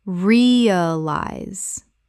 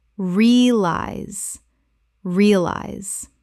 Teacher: Two syllables in natural speech. The middle syllable collapses entirely.